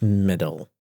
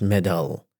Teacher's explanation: First one is middle, and the second one is middle, with a schwa between da and la